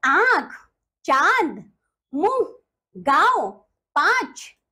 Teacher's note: बच्चों चंद्र बिंदु अनुनासिक हिंदी भाषा में इसे अनुनासिक कहते हैं इसे बोलते हुए नाक और मुंह दोनों से ध्वनि निकलती है